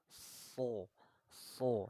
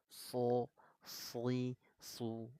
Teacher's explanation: Ada percikan nafas. Ada udara, ada nafas yang keluar, mengeluarkan nafas. So, so. Nah, coba letakkan aja telapak tangan nih, ucapkan huruf shadnya. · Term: hamas